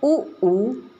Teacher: उ ऊ का उच्चारण स्थान है ओठ यानी कि होठ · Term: ओष्ठ